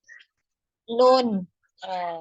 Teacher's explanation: Huruf nun ini makhrajnya adalah di ujung lidah. Ya, menempel pada gusi dari dua gigi atas. Kalau tadi huruf lam itu makhrajnya mulai dari ini dari ujung dua tepi lidah, maka huruf nun itu hanya dari ujungnya saja, di ujungnya aja ya, ujungnya ini aja.